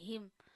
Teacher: हा गले के एंड से अदा होना चाहिए